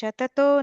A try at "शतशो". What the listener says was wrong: that first line, Shata show, sha sound. First line, second word. Shata show.